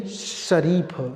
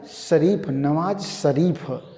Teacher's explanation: शरीफ का स बोलने के लिए हमें अपने जीभ को तालु पे लाना पड़ेगा। मतलब ये जीभ है, इसे यहाँ पे लाना पड़ेगा तालु पे, ठीक ना। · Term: तालव्य स